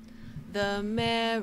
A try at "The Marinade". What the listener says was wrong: There's no O in marinade.